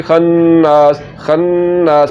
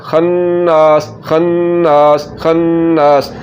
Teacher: पहले गुन्ना खन, फिर ज़बर के बाद अलिफ, नास लंबा करना है